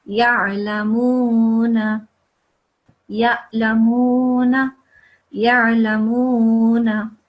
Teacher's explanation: with ain, it's obviously, it comes from deep in your throat. It's a thick letter.